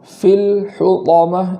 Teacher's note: لام پر جو جزم ہے اس کو زبر ہو جانے سے بچانا ہے۔ فی الحطامہ اس طریقے سے پڑھیں گے، اور آخر میں حطامہ جو طا ہے اس کو خوب مضبوطی کے ساتھ پڑھیں گے، ایسا نہ ہو کہ آواز چینج ہو جائے یا ہونٹوں کا سہارا لیا جائے یا واو کا سہارا لیا جائے، ان چیزوں سے پرہیز کرنا ہے۔